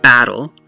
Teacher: The ba is stressed here, it's the hard syllable